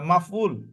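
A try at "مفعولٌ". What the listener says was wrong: একটা শব্দটা একটু ঠিক করে নেন তাহলে ভালো হবে। মাফ, আইনটা একটু লম্বা করে বলতে হবে, হ্যাঁ মাফউলুন বলেন।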